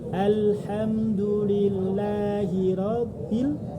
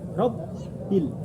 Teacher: Rabb itu harus ditekan, ada tasdidnya.